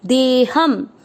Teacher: देह शब्द पूरा आने के बाद ह पे अनुस्वार आधा म